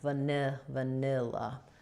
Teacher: So what I most often hear an error on here is on the vowel sounds. This is an I sound stressed in the middle syllable, like the word nil.